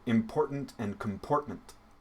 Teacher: vowel sound the o in the middle syllable is the same the unstressed vowels are pronounced the same the schwa sound which is an unstressed vowel sound in english and then the ending consonants are the same so important and